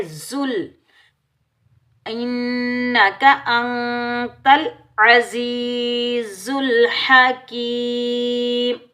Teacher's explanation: وقف میں میم کو ساکن ادا کریں گے، یا مدہ کو ایک الف کی مقدار میں کھینچ کر ادا کریں گے۔